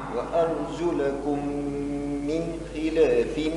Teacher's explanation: ميم وبعدها ميم ندغم الأولى في الثانية تولي ميم واحدة مدغمة